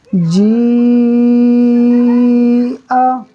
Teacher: حمزہ زبر آ ہو گئے، اب ہم نے اس کو مد متصل کی مقدار کھینچنا ہے